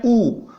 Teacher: अगर आप बोलेंगे तो बोलने से ही पता चलेगा कि होठ जो है वो हमारे गोलाकार आकृति में हो जाते हैं